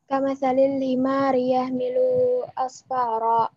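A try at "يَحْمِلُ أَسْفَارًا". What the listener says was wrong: Yahmilu enggak panjang ya. Coba diulang.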